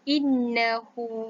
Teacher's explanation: Harkat yang dibaca untuk huruf kecil waw ini ialah dibaca dua harkat